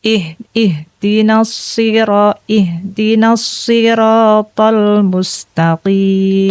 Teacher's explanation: Jadi untuk huruf H ini keluarnya adalah dari tenggorokan.